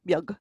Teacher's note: because you've got that B that's sitting next to a slender vowel, so it takes on the y sound